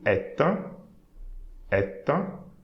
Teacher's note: Okay, so we'll pronounce the e, and again we are creating an extra letter T that we are going to join to that un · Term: liaison